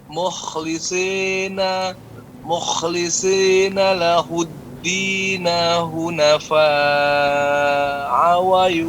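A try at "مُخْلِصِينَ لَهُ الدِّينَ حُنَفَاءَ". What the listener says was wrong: Bukan hu Pak ya, pakai ha. Ha gepeng.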